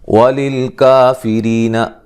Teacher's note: ری یا مدہ ہے، را کو باریک پڑھیں گے